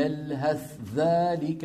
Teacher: ورد من بعض الأوجه عن حفص أنه يظهر الثاء عند الذال في هذا المثال